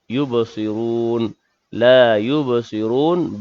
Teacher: ba yang sukun dalam kalimah tersebut, qalqalah sughra, berdetak kecil